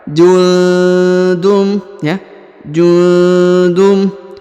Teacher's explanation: tanda tasdid innahum jundum huruf nun sukun bertemu dengan tanwin ya nun sukun bertemu tanwin UN harakat UN maka didengungkan dan disamarkan